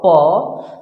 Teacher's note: जैसे बोल के देखो आप, प, देखिए जब हमने प बोला तो हमारा दोनों लिप्स टच करता है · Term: ओष्ठ